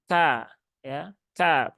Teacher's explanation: termasuk hams dan syidah di huruf Kaf itu ada baik dia ketika berharakat ataupun sukun Nah maka keluarkan ka ya Ka bukan ka ka Kaah hilang